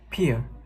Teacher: It has the longest vowel length, high pitch level, loud and full vowel. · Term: primary stress